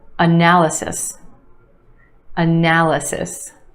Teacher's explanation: Four syllables in this word with emphasis on the second syllable, the a sound. Analysis. And yes, there are two schwas in this word.